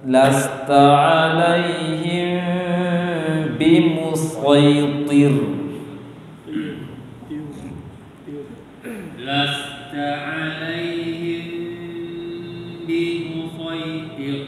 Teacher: Tonya kurang tebal tadi. Tonya kurang tebal. Sodnya tebal ya.